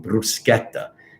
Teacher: So you have to pronounce it bruschetta with the R rolling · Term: roll the R